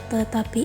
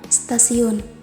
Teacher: T pada kata tetapi itu bunyinya bersifat apiko-alveolar, sedangkan pada kata stasiun T ini berubah menjadi lamino-alveolar sebab S yang posisinya berada di belakang T mempengaruhi berubahnya fonem T ini menjadi lamino-alveolar.